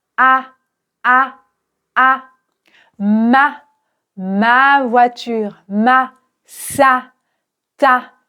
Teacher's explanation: c'est vraiment un a ouvert.